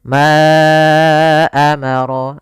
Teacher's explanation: sini ada Mad Jaiz munfasil yaitu Mad yang terjadi apabila ada huruf hamzah datang setelah huruf mad maka di sini panjang untuk Ma adalah 4 harakat atau 5 harakat